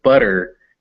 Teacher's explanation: butter your tongue just flaps up that's why it's called that it flaps up hits the roof of your mouth and stops and you never stop making the vowel sound which is why it sounds more like a d · this tap sound is also voiced which is why it sounds more like a d than a t · And what happens is your tongue is just kind of tapping the place where you make the T or the D sound. But when you make a T or a D, your tongue kind of stays there. But when you go butter, your tongue just flaps up. That's why it's called that. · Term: tap or a flap